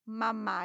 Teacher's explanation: Porque são fonemas bilabiais, é fácil de você falar mamá, é só lábio que trabalha, papá é só lábio que trabalha.